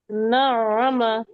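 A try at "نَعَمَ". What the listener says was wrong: মাশাআল্লাহ,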